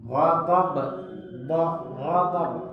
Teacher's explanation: Dhad itu di sisi lidah ya. Di sisi lidah bertemu dengan gigi geram.